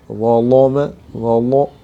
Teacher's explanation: زبان کی پشت کو اور جڑ کو اوپر کی طرف مائل کریں گے تو لام پر ہو جائے گا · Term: تغلیظ